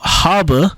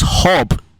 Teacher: Yiddish displays a very characteristic A to O shift. For example, habe in German actually becomes hob in Yiddish, or depending on the dialect, hoop.